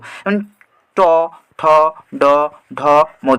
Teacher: উল্টে যাচ্ছে উল্টে গিয়ে কোথায় স্পর্শ করছে মূর্ধাকে স্পর্শ করছে তাকে আমরা মূর্ধা ধ্বনি বলবো ট ঠ ড ঢে অর্থাৎ ট